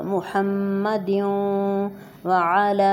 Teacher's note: اب محمد کی میم پر اور واو دونوں پر غنہ ہوگا